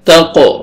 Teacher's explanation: تا کو قاف کے ساتھ ملائیں گے اور قاف کو قلقلہ کریں گے، ڈبل ساؤنڈ آئے گا۔ حروف قلقلہ میں سے ہے یہ تقو، واو کو کھڑا زبر ہے، کھینچنا ہے آپ نے ایک الف کے برابر۔